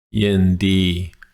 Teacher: Yindi, both halves of the word, flat tone.